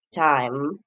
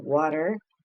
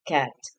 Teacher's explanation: t, which is voiceless. The place of articulation is alveolar. For example, in the initial is time, medial water, and the final cat.